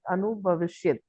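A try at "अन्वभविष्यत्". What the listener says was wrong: Anu plus abhavishyat. Anva bhavishyat. Again, yand sandhi in place of ukara, vakara will come. So, anva bhavishyat.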